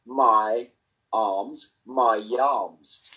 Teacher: I add a y sound if the next word begins with a vowel sound